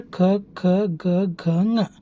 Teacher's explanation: ಈ ಎಲ್ಲಾ ಅಕ್ಷರಗಳು ನಮ್ಮ ಗಂಟಲಿನಲ್ಲಿ ಉತ್ಪತ್ತಿಯಾಗುತ್ತವೆ · ಈ ಎಲ್ಲ ಅಕ್ಷರಗಳು ನಮ್ಮ ಗಂಟಲಿನಲ್ಲಿ ಉತ್ಪತ್ತಿ ಆಗ್ತವೆ. ಈ ಅಕ್ಷರಗಳು ನಮ್ಮ ಗಂಟಲಿನಲ್ಲಿ ಉತ್ಪತ್ತಿ ಆಗುವುದರಿಂದ ಈ ಅಕ್ಷರಗಳನ್ನ ನಾವು ಏನು ಕರಿತೀವಪ್ಪ ಅಂತಂದ್ರೆ ಕಂಠ್ಯಾಕ್ಷರಗಳು ಅಂತ ಕರಿತೀವಿ. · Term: ಕಂಟಾಕ್ಷರ